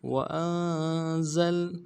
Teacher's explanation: زا کو لام کے ساتھ ملانا ہے زا سیٹی والا حرف ہے